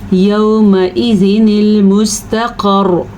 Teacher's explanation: ठीक है, मोटा कौफ पढ़ना है। रॉ पे थोड़ी सी तकरार होगी क्योंकि हमने रॉ को साकिन किया, लेकिन शद में दो रॉ होती हैं, एक मुतहरिक रॉ होती है और एक साकिन, तो इसीलिए थोड़ी तकरार होगी और रॉ पुर पड़ी जाएगी।